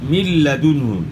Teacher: نون ساکن کے بعد لام ہے تو یہاں ادغام بلا غنہ ہوگا